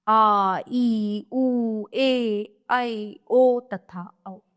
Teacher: जिन स्वरों के उच्चारण में ह्रस्व से दो गुना समय यानी दो मात्रा का समय लगता है वे दीर्घ स्वर कहलाते हैं। ये संख्या में सात है।